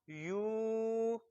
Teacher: वाव साकिन और उससे पहले पेश हो तो वाव मद्दा होता है, यानी इसको एक अलिफ जितना लंबा करेंगे।